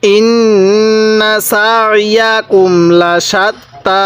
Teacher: আইনটা যদি একটু চাপ দিয়ে পড়ি গলার মধ্যে, তাহলে আইনটা আমাদের সহি উচ্চারণ হবে।